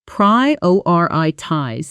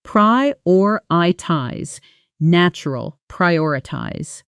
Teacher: the emphasis landing on that second syllable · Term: stress